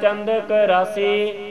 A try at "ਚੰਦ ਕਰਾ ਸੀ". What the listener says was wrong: ਚੰਦ ਕਰਾਸੀ ਹਾਂਜੀ, ਕਰਾ ਅੱਡ ਸੀ ਅੱਡ ਜੀ, ਕਰਾਸੀ ਨਹੀਂ ਕਹਿਣਾ, ਚੰਦ ਇਹ ਰਾਰਾ ਲੱਲਾ ਸਵਰ ਨਹੀਂ ਹੁੰਦੇ, ਚੰਦ ਕਲਾ ਸੀ ਅਰਥ ਬਣੇਗਾ। ਲੇਕਿਨ ਲੱਲਾ ਨਾ ਕਰ ਲਿਓ, ਰਾਰਾ ਠੀਕ ਹੈ।